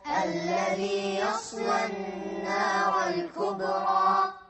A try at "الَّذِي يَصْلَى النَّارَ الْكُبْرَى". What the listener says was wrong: نرقق اللام هني. الذي يصلى النار الكبرى. الكبرى.